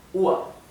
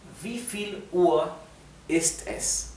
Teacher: La R final en alemán se pronuncia así, como una A y una R casi imperceptible.